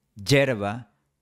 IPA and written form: 'ɟʝeɾ.βa (hierba)